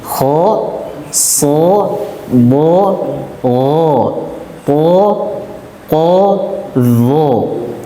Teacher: Isti'la naiknya suara ke langit-langit, mulut ketika mengucapkan hurufnya, sehingga ia dibaca tebal.